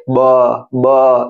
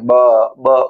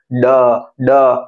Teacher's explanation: है ब का साउंड क्या होगा इधर उंगली रखेंगे ब ब यहां पे वाइब्रेशन उंगली पे वाइब्रेशन लगेंगे बी के साउंड में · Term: वॉइस साउंड